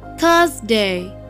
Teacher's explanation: when you say thursday you have to put your tongue in between your teeth